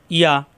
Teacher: জিব্বার মাঝখানে উপরে চাপ দিয়ে ইয়া